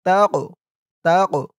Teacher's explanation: কফটা কলকলার হরফ, ধাক্কা দিয়ে পড়তে হবে।